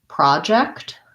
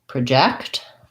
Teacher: it's first syllable stress for the noun